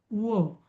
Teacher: व करताना बघा आपले ओठही हलतात. दातही हलतात आणि ओठही हलतात. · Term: दंत्योष्ठ